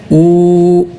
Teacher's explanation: ഊ എന്നൊക്കെ നീട്ടുന്ന വാവിന്റെ ഉച്ചാരണം രണ്ട് ചുണ്ടുകളുടെ രണ്ട് തെല്ലുകൾ ചേർന്നിരിക്കുകയും നടുഭാഗം ഒരല്പം തുറന്നിരിക്കുകയും ചെയ്യേണ്ടതാണ് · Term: മതിയായ വാവ്